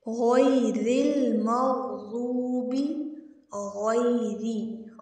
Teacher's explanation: غین موٹے حروف میں سے ہے، اس کو موٹا پڑھیں گے، اور رو کے نیچے زیر ہے، رو کو باریک پڑھیں گے